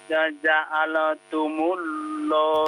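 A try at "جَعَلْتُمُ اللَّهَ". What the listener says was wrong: Nah, masih belum. Bapak jangan mencucukkan mulutnya. Jadi bukan tumul, tapi tumullah. Tumullah.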